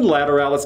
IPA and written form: ˌlætəˈræləs (Lateralus)